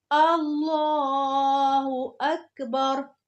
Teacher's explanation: कल बताया था कि लफ्ज अल्लाह जब बोलेंगे, जब लफ्ज अल्लाह से पहले जबर या पेश आ रही हो, कहीं भी, सिर्फ नमाज में नहीं, सिर्फ अल्लाह अकबर में नहीं, कहीं भी लफ्ज अल्लाह लिखा आएगा और उससे पहले जबर या पेश आएगी तो लफ्ज अल्लाह के लाम को पुर करके पढ़ेंगे